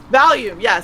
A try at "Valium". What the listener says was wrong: You're saying that so weird. Why are you putting the emphasis on the H?